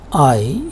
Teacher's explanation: If you have a look at it, I is a word. It is also a single syllable, and it is only a vowel or a vowel-like sound, which actually is a diphthong.